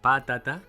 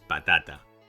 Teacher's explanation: the stress is on the second-to-last syllable. If it were on the third-to-last, "pàtata," it would have an accent mark.